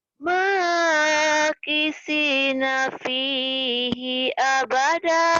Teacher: Si-nya panjang, nanya pendek.